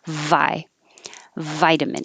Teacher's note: the first one vitamin vitamin you need a good v so put your teeth on your bottom lip it can be inside but resist it with your bottom lip so that you have vibration that creates the noise vi vitamin it's the same position as the f so if